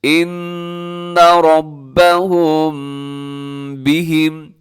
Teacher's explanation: ربهم بهم، یہاں میم ساکن کے بعد با آ رہا ہے تو یہاں میم ساکن پر بھی آپ نے کیا کرنا ہے؟ اخفا کرنا ہے، جس کو کہا جاتا ہے اخفاء شفوی، یعنی تھوڑی دیر آپ نے آواز کو ناک میں رکھنا ہے. · ان نون مشدد ہے، یہاں پہ غنہ کرنا ہے، آواز کو ناک میں لے کے جانا ہے. را کے اوپر حرکت ہے، یہ موٹا پڑھنا ہے اپنے را کو.